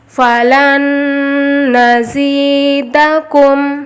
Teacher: زی پڑھتے وقت سیٹی والی آواز آئے گی